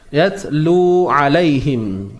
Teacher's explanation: sifat hams yaitu udara yang terlepas nafasnya terlepas